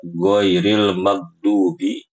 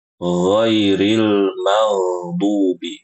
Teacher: Huruf ghainnya itu mengalir